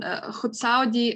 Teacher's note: In Khutsaudi, the C is a voiceless alveolar affricate